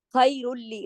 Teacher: रा लाम में जुड़ रहा है लेकिन गुन्ना नहीं हो रहा, तो लाम और रा یہ دو حروف ایسے ہیں کہ جب ان کے ساتھ ادغام ہوتا ہے تو غنہ نہیں ہوتا. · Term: इदगाम